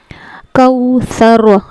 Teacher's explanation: सा का मखरज जबान की नोक और सामने वाले दांतों का किनारा · کاف لام زبر کل، کاف واو زبر کو، یہاں پر واو لین ہوگا، نرمی کے ساتھ ادا ہوگا، اور سا کا مخرج زبان کی نوک اور سامنے والے دانتوں کا کنارہ